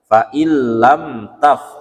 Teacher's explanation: Lam taf cukup ditekan saja, tidak perlu didengungkan · Nah, maka dia langsung nun matinya dianggap tidak ada, langsung ke huruf lamnya. Fa illam taf, lamnya jangan dengung karena itu izhar syafawi. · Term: idgham bila gunnah